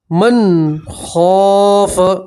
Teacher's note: یہاں نون ساکن کا اظہار آپ یہاں گننا نہیں کریں گے